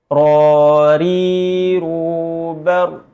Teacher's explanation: sifat inhiraf, menyimpangnya makhraj tatkala mengucapkan huruf ra